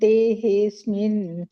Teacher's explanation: ಈಗ ನೀವು ದೇಹೇಸ್ಮಿನ್ ಅಂತ ಹೇಳ್ತಿರಲ್ಲ, ದೇಹೆ ಅಸ್ಮಿನ್ ಅಂತ ಹಿಂಗೆ ಸೆಪರೇಟ್ ಆಗಿ ಹೇಳ್ಬೇಡಿ